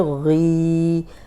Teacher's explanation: غین موٹا بھی ہے، دو حرکات لمبا کریں گے کیونکہ کھڑی زیر ہے اس پہ